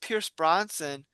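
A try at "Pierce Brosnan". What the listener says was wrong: Wait. You're saying Bronson. Rosnan. Bros. been doing it the entire time.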